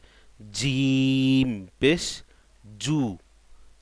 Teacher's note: জিমটা কত শক্ত, জিব্বার মধ্যখান থেকে উচ্চারণ হবে